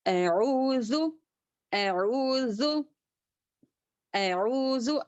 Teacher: आइन एक हरकत वाव एक हरकत 2 हरकत हो गए तो यहाँ पर 2 हरकत के बराबर ही खींचेंगे। उसके ऊपर रत्ती भर भी जी अऊज़ु इसको थोड़ा भी नहीं खींचेंगे, इसको 2 हरकत ही खींचेंगे। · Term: हुर्फे मद्दा